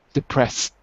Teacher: not ed, but just T, as in depressed